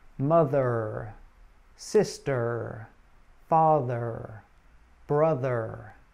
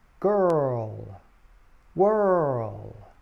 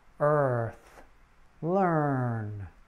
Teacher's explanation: should be in a middle and central position in your mouth the tip of your tongue should be curled and pulled back slightly your lips should be slightly rounded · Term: er sound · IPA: /ər/